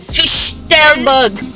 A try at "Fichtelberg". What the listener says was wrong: It's not FICH, It's FISCH, not FICH.